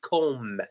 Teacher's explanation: And we don't pronounce the B.